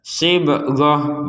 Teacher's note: Jadi kita mengubah huruf ta ini menjadi huruf H.